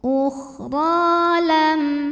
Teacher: Ra ini huruf madnya adalah mad tabi'i muqaddar karena ada baris fathah tegak di atas huruf ra, maka dipanjangkan ra-nya 2 harokat.